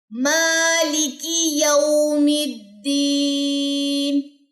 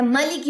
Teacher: میم کو لمبا کریں گے کیونکہ اس پہ کھڑا زبر ہے، آپ نے اس کے کھڑا زبر کو ڈراپ نہیں کرنا۔